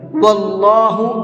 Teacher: کلام کو منہ بھر کے پڑھیں گے، اس لیے کہ اللہ کلام سے پہلے زبر ہے